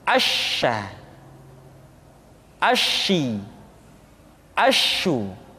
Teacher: sifat yang dimiliki oleh huruf sya yang paling nampak adalah apa yang disebut dengan sifat at-tafashi, yaitu menyebarnya angin di dalam mulut kita